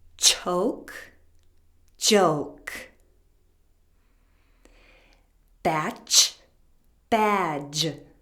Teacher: the CH sound is voiceless and the J sound is voiced